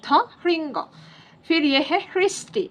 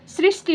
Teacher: ह ही रहता है और वोवेल साइन जुड़ने पर भी उसका उच्चारण बदलता नहीं है स नहीं होता है